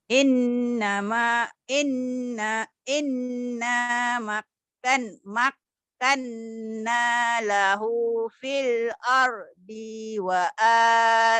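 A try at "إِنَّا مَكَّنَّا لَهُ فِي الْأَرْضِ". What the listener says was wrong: Pendek fil ardinya ya Bu. Pendek.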